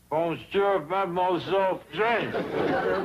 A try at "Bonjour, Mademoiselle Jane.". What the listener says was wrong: That's very good. Except for the mwah. Must be soft. Mwah. Watch my lips closely. Mwah.